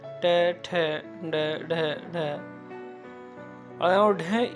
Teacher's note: ये मूर्धा का स्पर्श करते हैं।